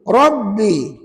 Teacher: kalau Rabbi itu sebenarnya ra itu saja yang tebal, ba itu nipis.